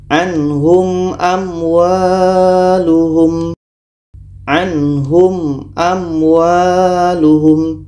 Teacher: Mim jelas, a jelas. Mim jelas, waw jelas dan tidak boleh didengungkan. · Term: izhar syafawi